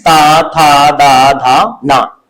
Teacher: इनके उच्चारण में देखेंगे कि जीभ जो हमारी दांत को स्पर्श करती है। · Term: दंत वर्ण